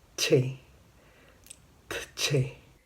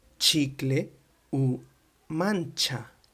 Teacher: Il fait un son pareil à ch comme en chaise, mais plus fort, comme si on ajouterait un T avant.